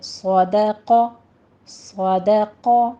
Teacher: آپ نے دال باریک رکھنا ہے